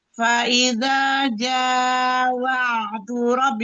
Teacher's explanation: Faida jawa'du rabbi, jangan wa'du, jangan terjeda, jangan terseda. Di situ ain punya sifat bainiyah antara mengalir dan tertahannya suara